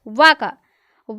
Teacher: वा का जो उच्चारण स्थान है वो दंत और ओष्ठ है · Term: दंतोष्ठम